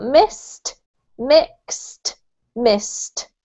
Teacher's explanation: with these EDs that we have here, they're actually pronounced as if they were T's